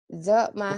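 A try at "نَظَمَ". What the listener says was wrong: Bukan za, itu titiknya. Kalau za nggak nyambung.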